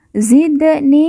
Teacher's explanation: ni kita baca panjang dua harakat karena di depannya terdapat huruf ya sukun atau ya yang merupakan tanda baca panjang dua harakat Rabbi Zidni